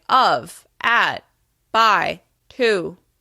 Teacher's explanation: those words are said at a slightly lower pitch. This is your baseline pitch.